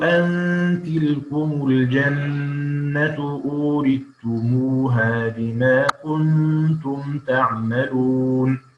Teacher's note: وأيضا في كلمة أورثتموها في موضعي الأعراف والزخرف يدغم الثاء في التاء